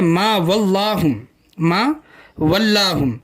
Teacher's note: मा वल्लाहुम का लाम लफ्ज़ अल्लाह का लाम नहीं है, इस लाम को बारीक पढ़ेंगे।